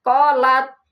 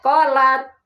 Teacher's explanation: Ta itu hamas dan syiddah. Syiddah itu tertahan suara, hamas berjalan napas.